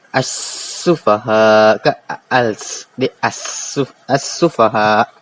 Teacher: Dan dibaca idgham syamsi ini kena dibaca dengan idgham. Apabila kita nak sebut alif lam dengan sin, nak kita sebut bunyi dia akan bunyi tasydid.